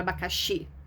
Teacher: Quando você fala o abacaxi, a sílaba mais forte é o xi. Então, o xi é a sílaba tônica.